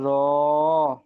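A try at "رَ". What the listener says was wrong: র টানছেন কেন? র টান হবে না।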